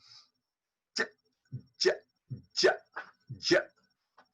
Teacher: The front part of the tongue and the palate just behind the gum ridge, they are the articulators. They must touch each other like this. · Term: j sound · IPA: /dʒ/